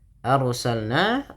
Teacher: rnya ditebalkan karena ada huruf ro yang sukun didahului dengan fathah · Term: ro yang tafhim